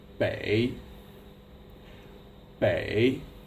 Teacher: The third tone is like you have something caught in your throat.